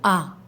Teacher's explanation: منہ کے خالی حصے سے ادا ہوتا ہے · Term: حمزہ الف